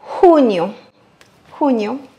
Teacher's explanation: le plus important ici, c'est de accentuer sur le U